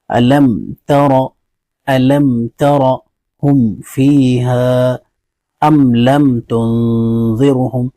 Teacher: میم ساکن کو ظاہر کر کے بغیر غنہ کے جلدی پڑھیں گے، اس کو اظہار شفوی کہتے ہیں۔